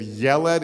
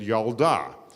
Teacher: the e sound changes to an ah